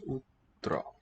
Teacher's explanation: Pure high back vowel with rounded lips. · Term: U sound